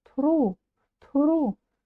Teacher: ударение ставится уже на слог ру на обычную букву